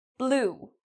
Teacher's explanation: So, again, your lips are small, but they're protruding outward